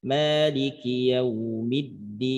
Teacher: bunyi N sedikit ada gunnah karena sifatnya ada gunnah asliyah